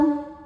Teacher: Mad thobi'i-nya fathah panjang pada kata mardho, hamzah-nya a pada kata au. Maka dho di kita panjangkan, boleh empat, boleh lima harokat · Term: mad jaiz munfashil